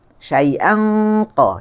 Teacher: Makhraj huruf qaf di sini nak sama dengan huruf kaf. Tetapi dia lebih keras sebab keluarnya di tengah. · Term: dengung huruf qaf